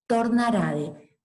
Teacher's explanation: en los verbos la T final latina aparecía sonorizada